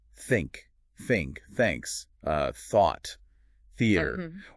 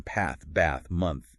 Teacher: Remember you listeners, this is just air. No buzz in your throat for this one, right? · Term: the voiceless sound, voiceless TH